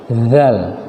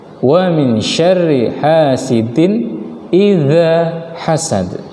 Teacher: tempat keluar hurufnya di ujung lidah, zal. Bedakan antara dal dengan zal. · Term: huruf zal